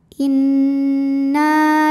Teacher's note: Maka huruf nun panjang 2 harokat. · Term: mad tabi'i zahiri